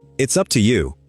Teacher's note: How many beats? 2, up and you.